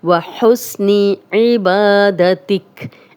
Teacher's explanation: با الف مدہ ہے، خالی الف، با پہ زبر، 2 حرکات لمبا کریں گے۔ تک جب بھی زیر زبر پیش والے حرف پہ ہم وقف کریں گے، قرآن مجید پڑھتے وقت، کوئی دعائیں پڑھتے وقت، تو ہم جزم لگا کے وقف کریں گے۔